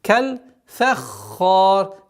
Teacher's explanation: Фа мягкая, ха твердая. И ра при остановке тоже твердая. Касра переходит в сукун.